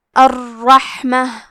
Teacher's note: را کو 2 حرف کے برابر پڑھیں گے کیونکہ اس پہ تشدید ہے، اور اسے موٹی آواز میں بھی پڑھیں گے کیونکہ یہاں ہا ساکن ہے، تو ہمیں ہا کو ہمزے سے پڑھنا ہے۔